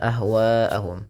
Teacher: Wa dipanjangkan empat atau lima harakat dan tidak boleh dikurangi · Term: mad wajib muttasil